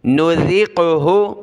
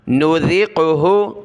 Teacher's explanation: ذال پر زبان نکالنی ہے نذقہ قاف پر قلقلہ ہوگا